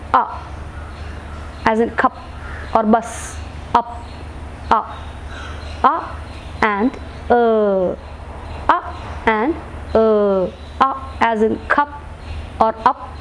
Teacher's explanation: making these sounds we erase the center part of the tongue center part of the tongue towards the place where the soft palate and the hard palate meet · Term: centering vowels